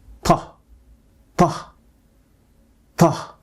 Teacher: First is raising the back of the tongue without touching or making any contact with the roof of your mouth. Second, the tip of the tongue is pressing against the area just behind the upper front teeth, or as we call it, the alveolar ridge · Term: plosive sound